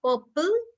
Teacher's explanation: if your r is followed by a consonant you are not going to pronounce it